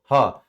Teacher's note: ये तीनों बातें हैं। क्योंकि स्वरयंत्री व्यंजन स्वरयंत्र से उच्चारण होता है